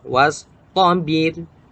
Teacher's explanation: ra yang sukun dan sebelumnya berharokat kasrah harus dibaca tipis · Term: ro dibaca tipis